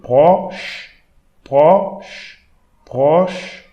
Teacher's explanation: CH, we should pronounce English SH. So sh.